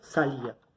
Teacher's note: Nosotros acá nos encontramos con la sílaba tónica, que es ia. Pero nos damos cuenta que la fuerza no recae sobre A, que es la sílaba abierta, sino que recae sobre I, que es la sílaba cerrada.